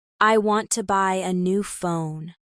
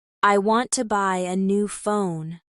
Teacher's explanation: Stress on want and phone.